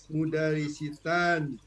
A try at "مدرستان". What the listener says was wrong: مدرسة. عفوا هذا السين هذا خطأ يا حركات يا مدرسة هنا السين فتحة. Nah هذا خطأ. أنا هنا فوق di atas مدرسة مدرستان السين هذا لا يتغير.